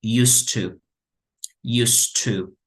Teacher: Y aquí como tengo T, entonces junto used con to, por lo tanto, diría así de manera más fluida como used to. Used to, como una sola T.